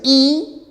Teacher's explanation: cuando pronuncias la I, la lengua se va más hacia adelante y la lengua sube. Entonces la I es anterior, alta y cerrada.